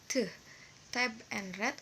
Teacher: Oral passage is blocked by pressing the tongue against the alveolar ridge or alveolar.